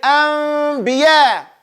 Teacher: But don't put your lips together. Do not pronounce the meme clearly until you get to the ba. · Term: Iqlabun